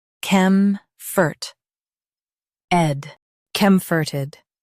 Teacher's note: Stress com and keep -forted soft.